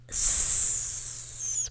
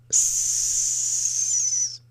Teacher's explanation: it's just like a leaky tire. Sound's just escaping.